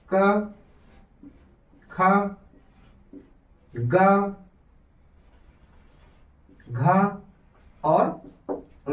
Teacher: कंठ वर्ण या फिर इसी को हम बोल देंगे का वर्ग कंठ के अंतर्गत या क वर्ग के अंतर्गत क ख ग घ और ंग आएगा